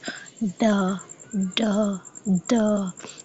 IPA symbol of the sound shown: d